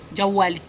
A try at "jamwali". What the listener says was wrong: C'est pas wali, jamwali.